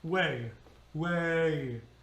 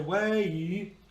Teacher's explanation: we linger on the first syllable, and then we sort of tuck in that second syllable, which is an E vowel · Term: diphthong